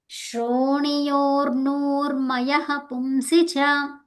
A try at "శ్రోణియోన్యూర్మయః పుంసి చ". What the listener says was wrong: యోర్ ఎక్కడుందమ్మా? యోర్ లేదుగా. యోర్ అంటున్నారు మీరు, అక్కడ రేప కనపడలా. అది శ్రోణి శ్రోణి యోని